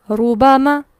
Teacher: را پر پیش ہو تو را پر ہوگا